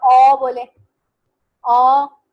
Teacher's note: यानी कि आप ओ बोले, ओ, ओपन भी है आपका मुंह, और क्लोज लिप राउंडिंग भी हो रही है, ओ।